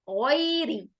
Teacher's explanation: غا کو موٹا کریں گے، کیوں؟ غا حروف مستعلیہ ہے